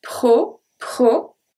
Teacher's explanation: The O is a closed O.